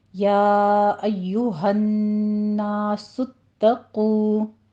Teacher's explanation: آگے آپ نے تشدید ادا کرنی ہے، یا ایوہ الناس اتقوا، تا کو باریک رکھنا ہے، صرف تشدید ادا کرنی ہے ، آگے قوف کو پر پڑھتے ہوئے واو مدہ ادا کرنا